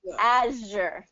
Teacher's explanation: it's same same as the sh sound but just with the voice